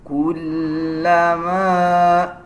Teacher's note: لام کے اوپر شد ہے، لام کو مضبوطی کے ساتھ ادا کیا جائے گا